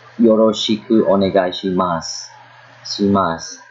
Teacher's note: Most of the time, when you pronounce a su sound at the end, the U is omitted, and instead a long S sound is produced.